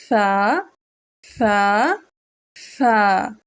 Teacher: زبان کی نوک کو اوپر والے دو دانتوں کے کناروں سے ملا کر نرمی سے فا کی آواز ادا کیجیے